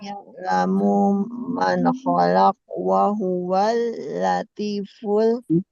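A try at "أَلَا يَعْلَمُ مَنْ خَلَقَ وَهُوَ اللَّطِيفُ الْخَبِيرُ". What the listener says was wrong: Kalau mau diwasol, dibaca itunya kholaqo wahuwal, ya kholaqo.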